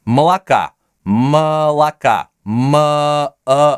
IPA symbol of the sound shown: ə